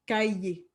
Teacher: on va venir mettre la demi-voyelle Y.